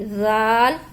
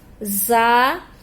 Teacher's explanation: ذال نرمی سے ادا ہوگا، زا سختی سے ادا ہوگا، سیٹی والا حرف ہے